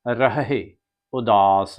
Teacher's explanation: ਰਹ ਦੇ ਦੋਨੇ ਹਾਹਿਆਂ ਦੀ ਆਵਾਜ ਸਾਧ ਸੰਗਤ ਜੀ ਕੱਢਣੀ ਹੈ ਪਹਿਲਾ ਰ ਤੇ ਹਾਹ ਮੁਕਤਾ ਬੋਲ ਕੇ ਰਹ ਅੱਗੇ ਜਿਹੜਾ ਹਾਹ